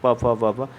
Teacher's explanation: प वर्ग क्या होता है, ओष्ठ से बोला जाता है